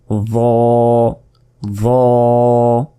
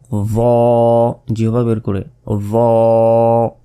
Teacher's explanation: জিহ্বার আগা সামনের উপরের 2 দাঁতের আগার সঙ্গে লাগিয়ে ভ